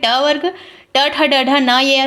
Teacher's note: मूर्धन्य के अंतर्गत आएंगे आपके ट वर्ग